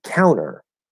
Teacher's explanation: the t in the middle with counter it might stay but it's very likely that we're also going to drop that t because again we have nt plus vowel the vowel is er in this case and so we'll say